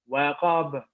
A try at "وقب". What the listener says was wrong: Waqaba. Not qab. Remember, don't add an alif after wow. It's not waqab, it's waqaba. Waqaba.